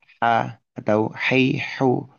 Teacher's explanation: Huruf H di sini huruf tenggorokan bagian tengah ya.